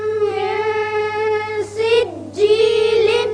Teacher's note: نون ساکن کے بعد سین جو کہ حروف اخفاء میں سے ہے، یہاں اخفاء ہوگا